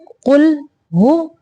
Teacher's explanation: قاف کو موٹا پڑھیں گے اور لام کو باریک، اور لام کو ساکن کرتے ہوئے حرکت نہیں دیں گے۔ قل قل نہیں کریں گے، پڑھیں گے قل قل۔